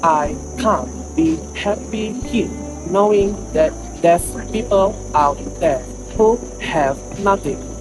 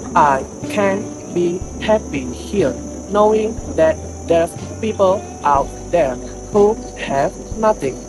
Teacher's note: While the original accent, which is rhotic and African influence, it becomes I can't be happy here, knowing that there's people out there who have nothing. In both versions, the main stress falls on happy and nothing, but the original accent gives more emotional weight to happy here and slows down at nothing for dramatic emphasis.